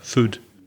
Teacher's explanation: Belfast and Scottish vowel sounds are shorter